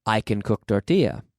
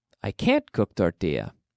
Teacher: normally we do not stress the word can normally. Normally we stress can't, but with affirmative cases, we say we stress the main verb or the subject.